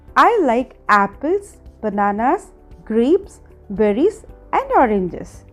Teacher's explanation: ఈ సెంటెన్స్ చెప్పినప్పుడు మీరు నా వాయిస్ అబ్జర్వ్ చేసినా కూడా యాపిల్తో స్టార్ట్ చేసినప్పుడు నా వాయిస్ రేస్ చేసి అండ్ లాస్ట్ ఆరెంజెస్ అని చెప్పినప్పుడు వాయిస్ డౌన్ అయింది. ఇట్ మీన్స్ లిస్ట్లో ఉన్న ఫస్ట్ ఐటెం అంటే యాపిల్ ముందు రేజింగ్ టోన్ సింబల్ అంటే upward arrow and last item అంటే ఆరెంజెస్ ముందు falling tone symbol downward arrow use చేయాలి. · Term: రేస్ ఫాల్ టోన్